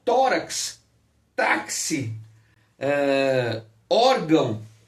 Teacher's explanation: aqui elas vão receber assento gráfico como tórax taxi eh órgão veja que a sílaba forte é a penúltima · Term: paroxítonas